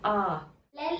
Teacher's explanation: its technical name is the open back unrounded vowel in this case your tongue is so and at the back